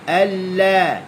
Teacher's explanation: Alladzina, alla, buka mulut. Hujung tepi lidah duduk di gusi. Alla. Gusi naik.